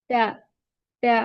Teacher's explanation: pronounced from the tip of the tongue and the roots of the upper front teeth